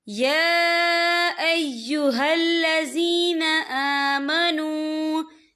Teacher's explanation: या के ऊपर खड़ी हरकत है और इस पर छोटी सी मद भी है, तो हम इसे 3 या 4 हरकत के बराबर खींच के पढ़ेंगे।